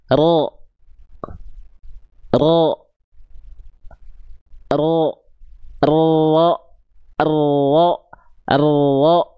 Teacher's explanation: Ujung lidah. Huruf ro itu dilafalkan dari ujung lidah tapi bukan ujungnya banget. Dia itu dilafalkan dari bagian ini.